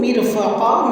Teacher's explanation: مر میں میم کے نیچے زیر ہے تو را کو ہم باریک کریں گے